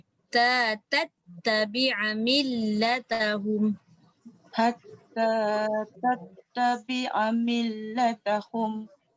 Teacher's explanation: ta dengan ta jangan cepat sangat. Dia ada sabdu.